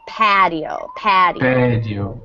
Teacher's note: just put a little more stress on that first syllable